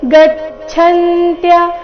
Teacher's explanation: ಛ ಮಹಾಪ್ರಾಣ ಚೆನ್ನಾಗಿ ಕೇಳಿಸಬೇಕು